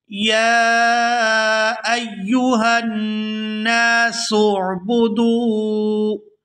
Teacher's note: یا کے اوپر کھڑی زبر ہے اور اس کے اوپر مد ہے، تو اس کو 5 سے 6 الف کے برابر کھینچ کر ادا کیا جائے گا